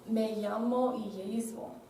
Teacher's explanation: Y también en Zaragoza usan yeísmo, y eso es la pronunciación de Y y los doble L's en la misma manera